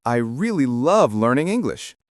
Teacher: Notice how really and English are stronger while I and love are lighter. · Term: Sentence stress, sentence stress